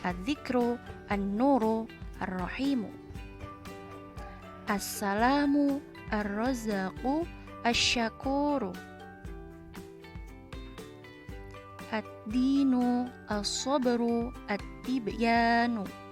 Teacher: kita juga bisa membacanya dengan meleburkan suara lam ta'rif pada huruf syamsiyah setelahnya · Lam sukunnya tidak terbaca ya, dan langsung dimasukkan ke huruf syamsiyah setelahnya. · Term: alif lam syamsiyah